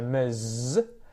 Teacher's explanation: Miss, it's that short ich sound, miss, whereas ms is often said with the Z sound at the end there